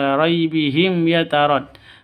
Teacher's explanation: Mim mati bertemu dengan ya, jelas terang ya, karena izhar safawi